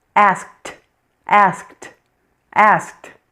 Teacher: Here you hear something a little bit different. The ed ending sounds like a t. Sounds like t.